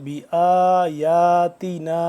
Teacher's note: دو سے تین الف کے برابر یہ اس ماد کو لمبا کریں گے